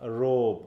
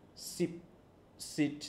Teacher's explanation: বলছে যেমন হচ্ছে সিপ, সিট, দেখো ভয়েস নেই কিন্তু। যেমন রোব, রোব যখন বলছিলাম তখন একটু কেঁপে যাচ্ছিল, কিন্তু এখানে যখন সিট বলতেছি তখন কিন্তু আর কাঁপতেছে না